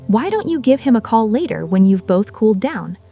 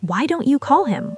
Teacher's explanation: A key thing here is your intonation. Your voice should go down at the end of the sentence, like you're making a suggestion. If your voice goes up, it can sound like a real critical question, like why don't you call him? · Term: gentle falling intonation